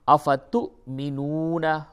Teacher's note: تو تا کو آپ حمزہ سے ملائیں گے، تا حمزہ پیش تو اور جھٹکا ہوگا. افتو، میم زر می، نون واو پیش نو، نون زبر نا.